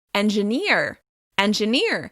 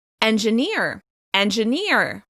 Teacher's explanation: In American English, this word will be stressed on the last syllable · the stressed syllable is longer, louder and higher in pitch